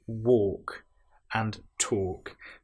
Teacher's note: in both of these words, walking and talking, we have the L, which isn't produced. It's not, we don't hear the L woke.